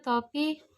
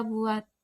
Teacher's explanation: jika berada di akhir kata tidak diucapkan lepas bibir kita masih tetap rapat tertutup saat mengucapkan bunyi misalnya pada